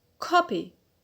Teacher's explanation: So the stress here is on the penult. Good, on ko.